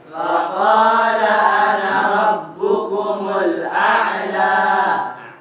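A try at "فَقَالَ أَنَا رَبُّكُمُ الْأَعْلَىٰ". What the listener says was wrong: Ana dibaca pendek ya. Ana dibaca alif ghair mutabar. Tidak dianggap ya.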